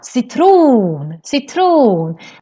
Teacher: The stress also goes up in the end.